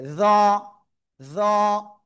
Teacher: এরপরে আমরা যে অক্ষরটা শিখবো সে অক্ষরটা এই যে এই অক্ষরটা, উপরে একটা নোক্তা, জিহ্বার আগা উপরে দুই দাঁতে আগায় লাগাবেন, লাগিয়ে একটু মোটা আওয়াজে উচ্চারণ করতে হবে।